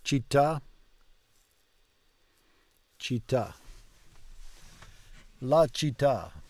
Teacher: you've got to make it two T's and pause in between, right? Città.